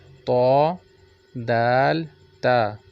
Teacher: इसका अदायगी, इसको पढ़ने का जो तरीका है वो ये है कि ज़ुबान की नोक जब सनाया उलिया की जड़ से लगे तो ये हरूफ अदा होते हैं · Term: हरूफ नीताइया